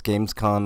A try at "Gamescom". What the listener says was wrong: Gamescom. It sounded like you said con, though.